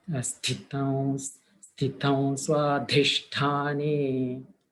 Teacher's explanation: Sthita, ta alpa prana.